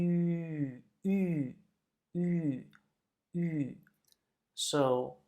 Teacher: we basically want to say E, but we make our mouths look like we want to say U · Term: umlaut